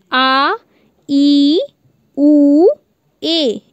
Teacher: इसमें 2 मात्रा का समय लगता है और इसको बोलने में आपको प्रेशर भी ज़्यादा देना पड़ता है। अपने जब आप बोलेंगे तो आपको ज़्यादा प्रेशर देना पड़ेगा, उसके साथ ही इसमें 2 मात्रा का समय लगता है, मतलब आपके स्वर से ज़्यादा समय लगता है आप लोगों के दीर्घ स्वर में, इसलिए इनको दीर्घ स्वर भी कहा गया है।